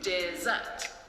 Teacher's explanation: Dessert is a 2-syllable word with the stress on the second syllable.